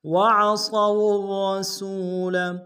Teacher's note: ادا کریں گے، واؤ کو آگے را کے سامنے آئیں گے، را کے اوپر تشدید زور دیں گے، را کو موٹا ادا کریں گے ، سین کو واؤ کے سامنے آئیں گے، واؤ مدہ ایک